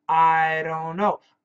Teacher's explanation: The N, for example, cancels the T. The T is gone. The D becomes like a flap D, which is like a flap T, but it's a D.